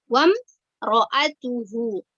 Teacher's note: Wam, jangan dibaca dengung ya, tapi dia dibaca jelas ya.